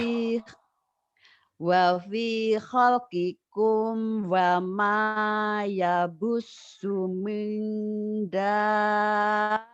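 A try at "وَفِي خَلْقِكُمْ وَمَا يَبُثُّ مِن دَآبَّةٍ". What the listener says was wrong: Cuman sudah ada kesan pengucapan alif lam itu suka terburu-buru ya. Terburu-buru. Ada orang-orang tertentu kalau ngomongin alif lam itu ada le-nya. Ibu le-nya tak ada loh Bu. Kadang-kadang ngopi hole, hole, ale. Nah, Ibu nggak ada itu.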